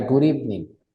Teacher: Y si lo pegamos rápido, si lo pegamos y lo pronunciamos rápido, sería good evening, porque la D la puedo convertir como en una R muy rápida